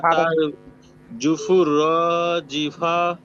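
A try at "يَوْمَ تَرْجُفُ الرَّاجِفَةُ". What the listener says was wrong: হ্যাঁ এই তো আবার বলেন, একটু টান হয়েছে, আবার বলেন।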